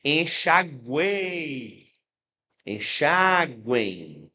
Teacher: o U é a semivogal, aí o som sobe para a vogal e desce para a semivogal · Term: tritongo